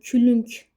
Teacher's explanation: Külünk sözündə külünk, yəni g k-yə keçir, belə tələffüz olunur